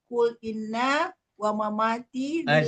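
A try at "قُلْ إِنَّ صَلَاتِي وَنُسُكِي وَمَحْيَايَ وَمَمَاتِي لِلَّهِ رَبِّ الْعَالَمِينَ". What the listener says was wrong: Jangan pakai wow kalau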